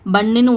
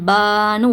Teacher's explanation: அலிப் மதாவை பயன்படுத்தி இரண்டு ஹரக்கத்த நீட்டி பண்ணுன்னு ஓதாம பான்னு ஓதணும்